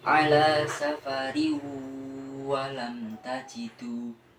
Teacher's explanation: Pada lafadz ala safari walam tajidu, di situ terdapat hukum bacaan idgham bihunah, yaitu adanya kasroh tanwin yang bertemu salah satu huruf idgham bihunah, yaitu wawu. Maka tanwin tersebut dibaca idgham atau dimasukkan kepada huruf setelahnya yaitu wawu · Idgham bihunah dibaca 2 harokat atau 1 alif